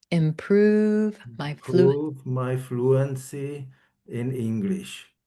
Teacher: we're emphasizing that blue moon vowel, and I'm spending more time on that sound.